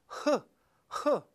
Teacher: When we make an H sound, we can feel the glottis tighten a little bit.